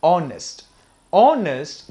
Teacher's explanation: s-o-n-e-s-t i told you this word is not pronounced as honest h is silent here this word is pronounced as honest honest the first sound is o